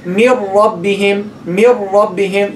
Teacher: you're dropping the noon, you're stressing the ra. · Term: idgham